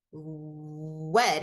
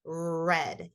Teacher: the the sound r or saying wet instead of red so using that W to substitute the r is also a process and that process is called gliding